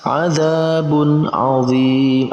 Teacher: antara tanwin dan ain dibaca dengan jelas, tidak digabungkan atau tidak didengungkan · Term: izhar